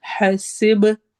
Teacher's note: ہا حروف ہلکی میں سے ہے، سین سیٹی والی آواز ہے، با پہ ہم قلقلہ کریں گے، ایکو ساؤنڈ ہوگی